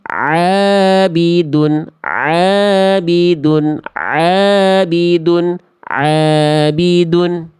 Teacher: Harus mau nekan kuat-kuat tengah tenggorokannya. Kalau enggak ditekan ya terus jadi Hamzah harus di harus dipaksakan dulu teman-teman biar organnya terlatih. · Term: huruf ain